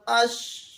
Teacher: زبان کا جو درمیان ہے وہ اوپر تالو کی طرف چلا جاتا ہے، جو کہ درمیانی حصہ ہے زبان کا اوپر تالو کی طرف التفات کرتا ہے۔ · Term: شین